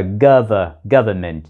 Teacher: Trong tiếng Anh, đôi khi người ta bỏ âm n và đọc là gov-ment.